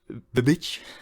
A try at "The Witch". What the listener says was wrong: It sounds like you're saying bitch. Like B-I.